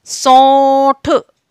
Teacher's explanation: अब देखिए इस पे मेरी ओ की मात्रा लगी हुई है, तो यहां मैं जब अनुनासिका का प्रयोग करूंगी तो उसको मैं अनुस्वार के रूप में करूंगी। सौंठ, मेरी गले से भी आवाज आ रही है और नाक से भी आवाज आ रही है